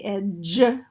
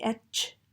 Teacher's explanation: So we're somewhere in between. So we might have some partial devoicing, but we're not going to have that full, the full devoicing